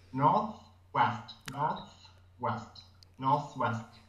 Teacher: one is the th in North when you said Northwest Northwest you have to get the tongue out between the teeth of the th